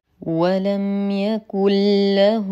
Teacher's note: هنا نون ساكنه وبعدها لام فالحكم ادغام كامل طبعا في كلمتين تدخل النون الساكنه دخولا كاملا في اللام فتصبح الكلمه يكل فلا انطق النون والاحظ التجديد الذي تولد على اللام من دخول النون فيها له · هاء الضمير المتحرك الواقعه بين متحركين فهي صله صغرى تمد بمقدار حركتين